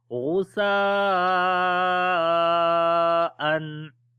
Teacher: After the tanween which is on the hamza, the next is hamza, so that's why we make izhar here, the clear sound of noon. Ghusa'an on the ha we make hums quality, and also the ha sound comes from the middle of the throat.